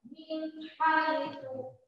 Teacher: Satu ketukan saja dari n ke h inilah idhar halqi.